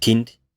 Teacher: So it is quite similar in the sense that you have the velar stop k, and then you have an aspiration on the release of that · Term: aspirated k